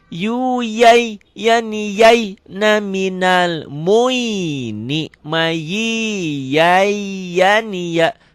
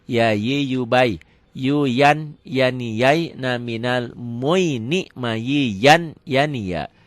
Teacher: yuyan jadi jai karena nunnya ketemu ya, diidghamkan, dimasukkan